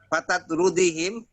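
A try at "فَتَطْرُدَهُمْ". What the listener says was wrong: Dalnya doma normal. Fatatruduhum.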